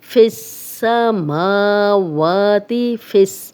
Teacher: فا کی زیر سین سے ملے گی